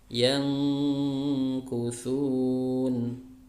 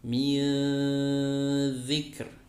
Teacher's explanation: Hanya berada di tengah-tengah ya. Antara dibaca jelas nun sukunnya dan antara mau dileburkan ke huruf setelahnya. Jadi suaranya samar, ikhfa.